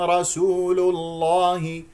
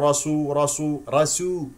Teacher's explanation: لا تستعلي اللام من كلمه رسول لانها مجاوره للام اسم الجلال الله